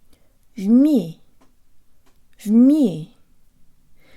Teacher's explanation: tongue behind the bottom teeth lips rounded and protruded me me there's almost a Y sound built into the M